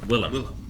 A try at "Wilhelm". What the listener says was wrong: Not Willem. There's an Elch. There's an Elch.